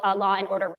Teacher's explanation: in my kind of English that long vowel can be separated from a following vowel by inserting an extra additional R sound